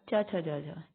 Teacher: तालव्य व्यंजन, जो हम तालू पे लगती है ना जीभ तब निकलते हैं